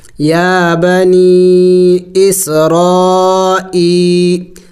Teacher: یا مدہ کو ایک الف کے مقدار لمبا کرنا ہوتا ہے، یعنی 1 سیکنڈ تک اس کو لمبا کیا جائے گا